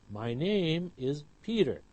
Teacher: when you hear this, the words name and Peter are clearer than my and is. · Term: sentence stress